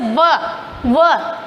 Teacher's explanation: जो नीचे के होठ और ऊपर के दांत मिलकर जब बोलते हैं तो वो होते हैं दंतोष्ठ्य।